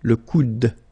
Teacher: And then the second one here is le coude, okay? Remember, you don't insist on this final e, it only gives you the sound of d at the end.